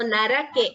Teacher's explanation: So we don't chant it as narke. R is not half, it is full.